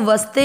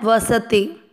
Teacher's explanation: वस दोनों अक्षर पूरे हैं तो इनको वस्ते नहीं बोलना है